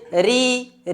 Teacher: री कहने से हमारा मुंह छितरा जा रहा है, चौड़ा हो जा रहा है, इसलिए री हम किस में रखेंगे, आवृत्ताकार में हम री को रखते चलेंगे।